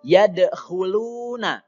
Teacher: lu itu dibaca panjang, namanya adalah mad tabi'i, panjangnya 2 harokat saja.